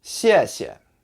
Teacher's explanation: the second time you say that word, you'll say it with a neutral tone. So like no tone, you'll say a little bit shorter and just kind of relax into that sound.